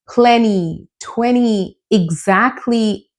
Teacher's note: If you have a consonant and then you have the t sound, then usually we have to drop the t sound.